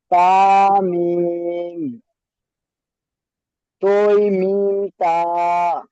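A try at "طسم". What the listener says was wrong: এটা তোই নয়, এটা ত। হ্যাঁ, এটা তোই নয়, ত।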